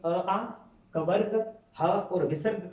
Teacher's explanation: अ आ, कवर्ग, ह और विसर्ग का उच्चारण स्थान जो होगा वो कंठ होगा